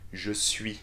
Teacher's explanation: the difficulty is to switch from the u sound to the e sound from a round shape of your lips to a full stretch